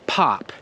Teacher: the P in the beginning of pop is just as strong as the P in the end of pop